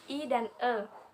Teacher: vokal yang diucapkan dengan bentuk bibir tidak bulat atau terbentang lebar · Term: vokal tak bulat